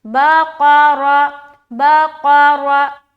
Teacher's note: را کو پر کرنا ہے کیونکہ را کے اوپر زبر ہے. قاف موٹے حروف میں سے ہے، قاف کو بھی منہ بھر کر بولنا ہے.